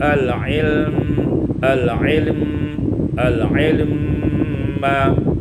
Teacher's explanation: Al-ilmi ma, ini diwasalkan ya, idgham mim, idghamul mim fil mim, diidghamkan mim pada mim